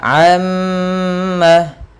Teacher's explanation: Cara membacanya yaitu menahan suara mimnya sepanjang 2 harakat. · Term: gunnah